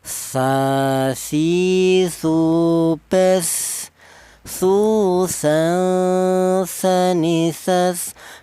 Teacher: Sa itu keluar huruf berasal dari ujung lidah menyentuh ujung gigi seri atas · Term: huruf sa